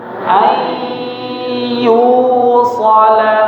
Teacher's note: Masih tersisa sifat dari huruf nun sukunnya yaitu sifat ghunahnya tidak hilang. Makanya dia ada dengungnya. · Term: idgham naqis